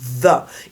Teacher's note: Pourtant, quand vous dites va, c'est un son voisé.